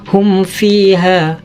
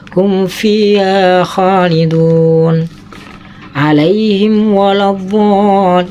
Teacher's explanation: Apabila ada mim sukun bertemu dengan fa dan waw, maka harus benar-benar dibaca idhar dan jangan sekali-kali dibaca ikhfa.